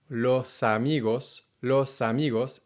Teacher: And not only do they connect, but the consonant, in this case an S, tends to move to the next syllable.